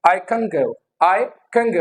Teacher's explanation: Because जो velar sounds है हमारे पास वो कौन कौन से, क, ग एंड ng, क, ग एंड ng. ओके, तो न जो है दैट इज एल्वुलर, ग इज वेलर. तो ये प्लेस ऑफ आर्टिकुलेशन अफेक्ट हो रहा है न का, and it becomes ng in fluent जो है स्पीच में.